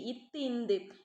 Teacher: டேஷ் ஆகிய இரு மெய்களும் மேல்வாய் பல்லின் அடியை நாக்கின் நுனி பொருந்துவதால் தோன்றுகிறது